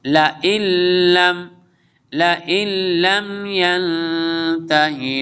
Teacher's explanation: نون ساکن کے بعد لام آ رہا ہے تو نون کو لام کے ساتھ جوائن کر دیں گے